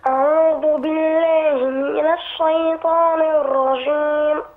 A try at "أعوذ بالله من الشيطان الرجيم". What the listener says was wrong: مش من لا. الشيطان من الشي.